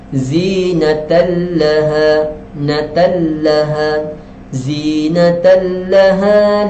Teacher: tanwin yang tidak selari, sepatutnya di sini dengung, tetapi disebabkan dia jumpa dengan lam, maka tidak dengung